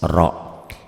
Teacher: Karena setelah alif lam huruf ketiganya itu ro, salah satu bagian dari huruf samsiah ro ya. Ro-nya dibaca tebal karena barisnya dia di atas